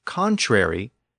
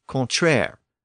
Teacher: within standard French, the suffix airy became air, so they stopped pronouncing the re part